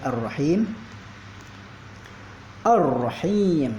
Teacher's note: Jadi ar-rahim alif lam tidak dibaca atau langsung dimasukkan ke dalam ra. Ar-rahim jadi masuk ke dalam hukum lam ta'rif syamsiyah atau alif lam syamsiyah.